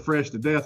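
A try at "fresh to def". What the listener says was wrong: Yeah, you did, and it's DEF, DEF, just FYI. It's not fresh to death. No, you said fresh to death. That was super white. That sounded super white when you said that.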